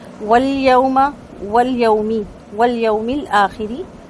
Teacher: یا واو زبر یو، واو لین ہے، ہونٹ مکمل گول کریں گے